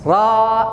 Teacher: Harakatnya fathah. Bibir harus buka, bukan o dhammah.